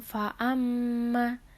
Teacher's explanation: disini terdapat hukum bacaan ghunnah karena ada member tanda baca tasydid dibaca dengan dengung dan ditahan selama tiga harokat lalu terdapat Mad Thobi'i karena huruf mim berharokat fathah bertemu Alif